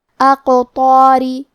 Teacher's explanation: حرف الطو حروف التفخیم میں سے ہے تو ہمیں طو کو بھاری آواز میں پڑھنا ہے، اور کیونکہ اس کے بعد مد الف ہے اور مد الف اپنے پیچھے والے حرف کا حکم لیتا ہے تفخیم میں اور ترقیق میں، لہذا ہم مد الف کو بھی بھاری آواز میں پڑھیں گے · آخری میں را کے نیچے زیر ہے تو یہاں را کا حکم ہے ترقیق، ہمیں حرف الرا کو پتلی آواز میں پڑھنا ہے